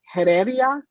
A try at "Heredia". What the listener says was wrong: The H is silent.